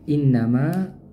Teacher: Nah, in di situ ada nun bertasydid ya. Maka didengungkan. adanya udara yang keluar dari pangkal rongga hidung.